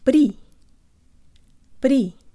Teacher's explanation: feel your tongue flick the roof of your mouth